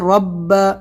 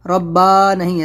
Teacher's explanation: را کو موٹا کرنا ہے، تشدید ہے تو رب، ربا نہیں ہے، زبر ہے رب۔